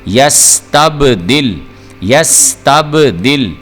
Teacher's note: با جو ہے یہ حروف قلقلہ میں سے آ گیا، اس کی آواز کو ابھار کے پڑھنا ہے، اور یہ با ساکن ہے، یہاں پہ لام ساکن ہے۔